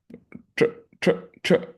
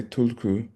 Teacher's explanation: It's like TR, but with your tongue curled back. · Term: retroflexed palatal